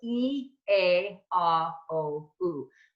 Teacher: we go basically from our brightest which are more spread vowels to our darkest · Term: bright vowels and dark vowels